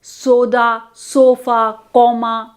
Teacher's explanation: the tongue is said to be in the neutral position as we pronounce this vowel